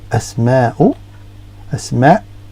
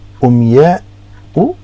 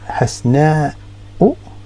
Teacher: when you pronounce it, it's like a glottal stop, so it's like you've got a hiccup